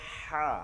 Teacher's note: হা এর ক্ষেত্রে চাপটা মানে বাতাস বের করে নিয়ে আসতে হবে